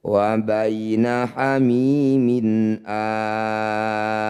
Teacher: Ketika mad badal atau mad tabi'i bertemu huruf hidup dan dihentikan, jadilah bacaan mad arid lisukun. Cara bacanya a panjangkan 6 harokat, huruf terakhir sukunkan.